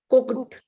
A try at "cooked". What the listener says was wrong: एक कुकड नहीं होगा, कुक्ड. कुकड नहीं, कुक्ड.